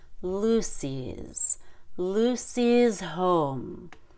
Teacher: Lucy starts with a long u but then you've got to slide all the way forward and bend your tongue for the Y which is a long e